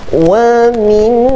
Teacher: Wa mimma di sini terjadi hukum wajibul ghunnah. Kita dengung 2 harakat. · ma kita panjang 2 harakat di sini. Mad asli.